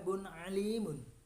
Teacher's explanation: bunyi nun mati atau tanwin jelas tanpa berdengung sedikit pun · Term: idhar halki